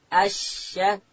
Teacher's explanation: شین ادا کیږي د ژبې منځ به لوړ تالو ته ورلو.